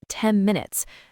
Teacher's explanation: often the N in 10 will sound more like an M sound, almost like 10 minutes. That's because the lips are already closing for the M in minutes.